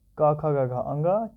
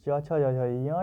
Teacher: क वर्ग कंठ और च वर्ग होता है तालव्य